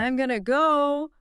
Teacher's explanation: I am contracts to I'm and going to reduces to gonna.